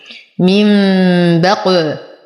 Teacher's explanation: لدينا نون ساكنة وبعدها الباء في كلمتين، نقلب النون الساكنة ميما عند الباء، فالحكم إقلاب مع الغنة. من بق وقلقل القاف فهو من حروف قطب جد حال سكونها